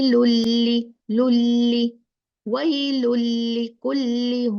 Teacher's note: नून चला गया कंप्लीट लाम में मर्जिंग हो गया इस वजह से तद आ गई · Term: इगाम, इदगाम